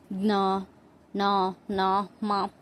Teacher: ಅನುನಾಸಿಕ ಅಕ್ಷರಗಳು, ಲಾಸ್ಟ್ ಅನುನಾಸಿಕ ಅಕ್ಷರಗಳು. ಮೂಗಿನ ಸಹಾಯದಿಂದ ಉಚ್ಚರಿಸಲಾಗುವ ಅಕ್ಷರಗಳನ್ನ ಅನುನಾಸಿಕ ಅಕ್ಷರಗಳು ಅಂತ ಕರಿತೀವಿ.